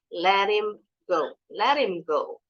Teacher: So the T sounds like a quick D.